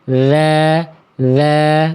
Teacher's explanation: Salah satu sifat dari huruf dalal dari segi suara itu sifatnya namanya adalah rakhawah atau rikhwah. Artinya apa? Suara yang mengalir. Jadi suaranya bukan suara yang mampet bukan.